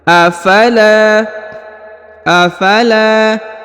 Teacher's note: la dipanjangkan dua harakat karena di depannya terdapat Alif